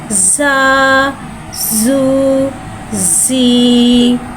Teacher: ज़ा को एक अलिफ यानी दो हरकत के बराबर खींच के पढ़ेंगे। ज़ा में सिटी को ज़ाहिर करके पढ़ेंगे। ज़ा के नीचे ज़ेर आ रहा है, ज़ेर को नीचे गिराते हुए अदा करके पढ़ेंगे।